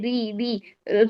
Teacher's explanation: جب را میں کیا ہوتا ہے, باریک را میں ہوتے ہیں ری ری, زبان کی فرنٹ سائڈ اوپر والا حصہ ہی اوپر تالو کے چپک رہا ہوتا ہے, بینڈ نہیں ہوتی, اس کا پیچھے والا حصہ نیچے والا حصہ نہیں لگ رہا ہوتا راس اللسان کا.